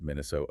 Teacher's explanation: The most distinct feature often pointed out is a very pure long O sound, frequently without the offglide or defthonization that SAA usually uses.